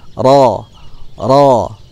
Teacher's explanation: Lalu bertemu dengan huruf ro, ya. Ro berharokat fathah, maka dibaca dengan tafkhim, tebal, ya.